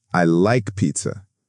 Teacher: And now the statement with falling intonation. I like pizza. Let your voice go down.